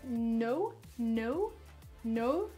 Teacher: Au niveau de l'Angleterre, la prononciation de no, par exemple, va plutôt être no, no, no. Il y a comme un peu un E à la fin.